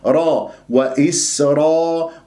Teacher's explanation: والألف تفخم بعدها تبعا للراء